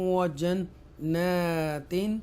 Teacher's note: Extra stress کے ساتھ گنہ کریں گے نون پر, اور یہاں پر اظہار کریں گے.